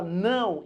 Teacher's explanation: Quando você fala não, embora apareça um O, na verdade isso daqui é um U. Você pronuncia como U. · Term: ditongo